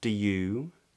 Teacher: Some people say do you, so they just make the do into a d, and then you has a long oo vowel with rounded lips.